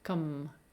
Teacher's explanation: To produce these sounds, you want to concentrate on shortening this vowel sound, producing it flat, meaning no pitch change, and essentially be lazy. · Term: unstressed vowel sounds